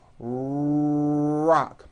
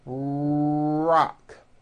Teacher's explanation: my lips are coming forward and my tongue moves back in my mouth, and I push out the R sound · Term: American R sound